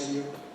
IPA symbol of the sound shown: ə ju